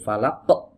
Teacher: ditutup pita suaranya muncul Hamzah ya